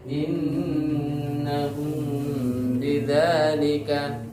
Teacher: Jadi di cara pengucapannya dengan merapatkan kedua bibirnya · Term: ikhfa syafawi